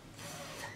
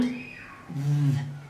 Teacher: As you can hear, the first consonant is voiceless because it causes no vibration in the vocal cords, but the second one is voiced. According to manner of articulation, both of these sounds are fricatives. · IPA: θ, ð